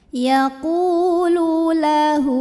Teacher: hak domirnya kita panjangkan 2 harokat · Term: mad silah qasirah